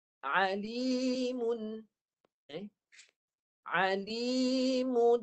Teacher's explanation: Baca dengan jelas tanwinnya tanpa dengung. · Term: jelas tanpa dengung